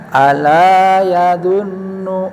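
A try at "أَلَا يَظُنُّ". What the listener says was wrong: Ujungnya kurang dengung. Iya, nun tasjid, mim tasjid harus didengung sebenarnya ya.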